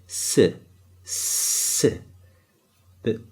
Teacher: It's like a deep S. It's an S that's coming from the back of your mouth. So if you say S like this, S, S, this sound comes from the back.